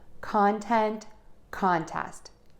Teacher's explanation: We have content which is the noun and contest. So let's stress syllable number one in content and contest